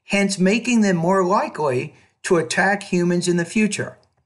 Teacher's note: I was trying to put a slightly higher pitch at the end of each thought group and once I got to the end of the sentence my tone fell